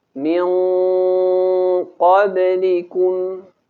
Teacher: Kalimat min qablikum seharusnya dibaca tebal ikhfa'nya karena huruf qaf termasuk huruf yang memiliki sifat isti'ala.